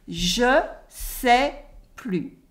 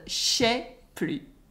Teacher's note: Je sais plus. Then we remove the e at the end of je and we have kind of a je sais plus or je sais plus. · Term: the sh sound